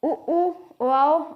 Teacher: वृत्तमुखी स्वर जिन स्वरों के उच्चारण में ओष्ठ गोल हो जाते हैं, इनकी संख्या 5 है: उ, ओ आओ और आगत वाला आ।